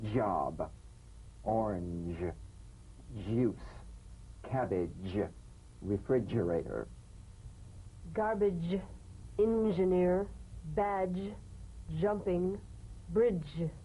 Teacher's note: place the tongue on the upper gum ridge for the D, D, then let the tip peel down for the ZH resonance.